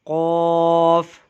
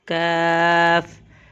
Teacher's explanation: قاف کی آواز کو ہم موٹا کر کے ادا کرتے ہیں، جبکہ کاف کی آواز جو ہے وہ باریک کر کے ادا ہوتی ہے